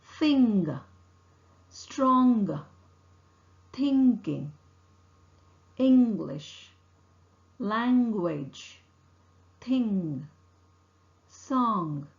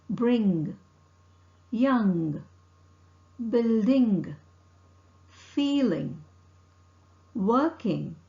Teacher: the air is not allowed to escape through the mouth the air escapes through the nasal passage keep in mind the vocal cord vibrates now practice the sound · the sound is articulated by pressing the back of the tongue against the soft palate the soft palate is lowered and the air is not allowed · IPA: ŋ